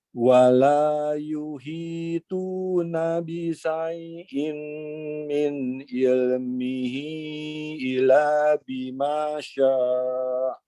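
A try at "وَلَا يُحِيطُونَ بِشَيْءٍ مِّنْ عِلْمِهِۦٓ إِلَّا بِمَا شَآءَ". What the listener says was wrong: Oke, bisyai'nya shinnya kurang tebal ya. Kemudian min ilmihi panjangkan.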